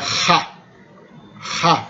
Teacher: Essa aqui é uma fricativa velar, que geralmente é representada por X ou por KH, dependendo do esquema de transliteração.